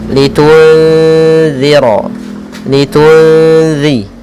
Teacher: makhraj huruf zal yaitu ujung lidah menempel dengan gigi sari yang atas